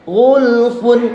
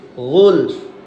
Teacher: fa-nya setengah harokat. An-nutqu binisfil harkah. Pengucapan setengah harokat. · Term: waqaf raum